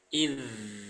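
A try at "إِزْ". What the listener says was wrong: Jangan ada udaranya ya. Cukup suara aja yang mengalir.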